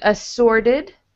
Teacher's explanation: T turns into a D in assorted.